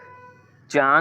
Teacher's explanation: अब भैया इसमें मुंह नाक दोनों से अब चांद बोल रहे हो ठीक है तो चांद मुंह से भी निकल रहा है और नाक से भी निकल रहा है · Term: अनुनासिक